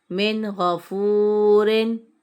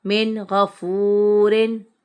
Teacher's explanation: نون ساکن کے بعد کیا آ رہا ہے غین آ رہا ہے حرف ہلکی کا یعنی اظہار ہوگا غنہ نہیں کریں گے اس لیے ہم نے اس کو نارمل پڑھا غنہ نہیں کیا.